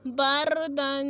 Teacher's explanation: با زبر را ساکن بر، دال دو زبر الف دن، بردن۔ اب رائے ساکنہ ہے اور اس سے پہلے یا ساکنہ یا زیر اصلی بھی نہیں ہے، تو یہاں پہ را موٹی پڑھنے ہوگی